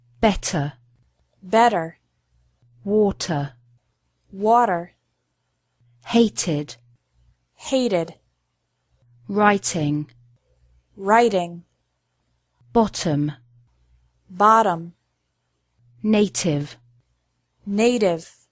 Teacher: can be different in British and American English in this situation Americans often pronounce the letter T like a quick D sound